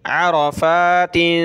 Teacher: आरा, रा को मोटा करेंगे